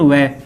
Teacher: केवल व का उच्चारण स्थान हमेशा दंतोष्ठ होता है, दंतोष्ठ होगा।